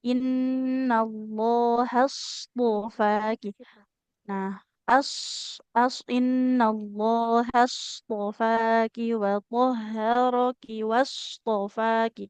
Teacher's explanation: dalam pengucapan huruf shod ada namanya sifat rohwa, harus mengalirkan suara ya.